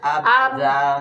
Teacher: berarti dari sini keluarnya ba itu dari syafatain, dari dua mulut